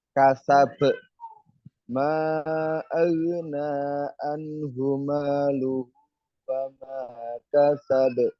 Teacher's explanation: Kasa be-nya itu kol-kolahnya itu terdengar jelas. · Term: kubro